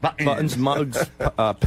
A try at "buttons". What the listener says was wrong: T. You got to say a T.